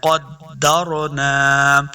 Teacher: نحن نحن قدرنا، یہ جو دو نقطوں والا قاف ہے اس کو ہم نے ہمیشہ موٹا کر کے پڑھنا ہے کیونکہ یہ حروف مستعلیہ سے ہے۔ پھر قاف کو دال کے ساتھ ملانا ہے، دال مشدد ہے۔ قدرنا، را کلرفل آپ کو نظر آ رہی ہے، را ساکن ہے، اس کو موٹا پڑھیں گے، پر پڑھنا ہے۔